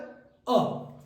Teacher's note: एक मात्र है जो मध्य से बोला जाता है, जिसे अर्ध विवृत कहा जाता है, और वो है अ।